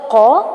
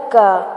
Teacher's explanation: جو ڈنڈے والا کاف ہوتا ہے اس کی آواز تھوڑا منہ کے قریب سے آتی ہے